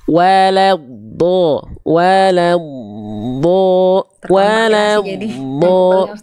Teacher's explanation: Waladdo, wawunya tipis, lamnya tipis, dotnya tebal.